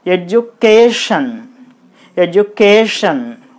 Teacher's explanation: While pronouncing this word, we have to give more stress. And we have to highlight the sound C-A-K. The remaining syllables should be pronounced with lower force.